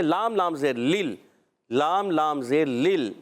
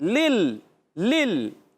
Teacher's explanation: آپ نے یاد کیا، زبان کا کنارہ ضاحک سے ثنایا تک کے مسورے، مسوروں سے جب زبان لگتی ہے، زبان کا کنارہ لگتا ہے تو ادا ہوتا ہے لام